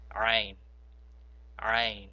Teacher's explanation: The next letter is ain, ain. Now when you pronounce this ain, you must pronounce it from your throat. Just like the ha, this ain will come straight from the bottom of your throat.